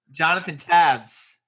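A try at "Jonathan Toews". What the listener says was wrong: No, an A sound. A long A.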